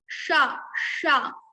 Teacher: we just touch our murdha to pronounce sha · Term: murdhanya sha